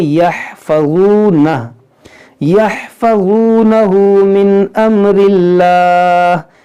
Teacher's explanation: اس میں جلالت سے پہلے زیر ہے تو یہاں پر اس کو ہم باریک پڑھیں گے